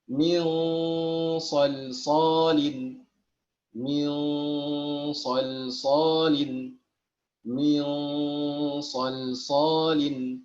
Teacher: Maka gunnah dengungnya adalah tafkhim. Dengungnya adalah tafkhim ketika bertemu huruf 5 dari 15 ikhfa yang tadi. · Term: tafkhimul gunnah